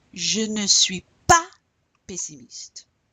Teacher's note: And in fact, in spoken language, oftentimes the ne completely drops out and you only hear the pa. So you really want to punch that pa, emphasize it.